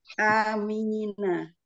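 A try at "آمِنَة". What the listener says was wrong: Iya, A-nya jangan dipanjangkan.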